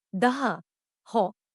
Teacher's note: राजस्थानी की अनेक बोलियों में स ध्वनि ह रूप में उच्चारित होती है